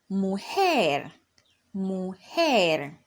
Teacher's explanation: our stress is going to be on the last syllable, which is lar